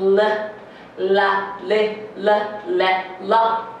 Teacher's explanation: 上顎の真ん中のあたりではなく、前歯の後ろのあたりに、舌を横にちょっと広げて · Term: L の発音